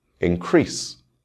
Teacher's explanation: This is a verb, and the stress will fall on the second syllable.